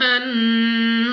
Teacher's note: نون مشدد غنہ کر کے پڑھنا ہے، ناک میں لے جا کر پڑھیں گے